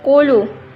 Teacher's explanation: Qulu mad asli. Sebelum waw terdapat dumah, panjangnya satu alif dua harkat.